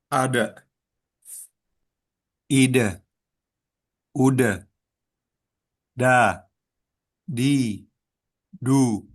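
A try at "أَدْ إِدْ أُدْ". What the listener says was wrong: Coba sukunya itu hati-hati jangan sampai berharokat ke A gitu ya. Tapi bunyinya tuh D, D, D. Ide, ade, ade, ide, ude, gitu ya. Ade, ide, ude, da, di, du.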